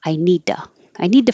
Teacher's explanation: the T changes to a d and the U changes to an uh